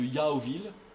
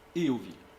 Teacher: l'ancienne triphtongue Yao, il la conserve